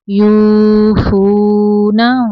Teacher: वाव साकिन के पीछे पेश है। वाव मद्दा, दो हरकत अरबिया लंबाई है इनकी।